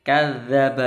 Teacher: yang betul lidahnya nempel di gigi atas